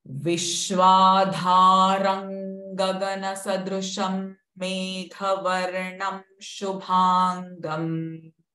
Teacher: Vishwadharam. Now here, the Anuswara is followed by G sound. So it will be the nasal ng sound.